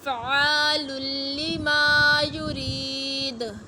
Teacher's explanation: وقف مطلق ہے تو وقف کریں گے، دال کو ساکن کر دیں گے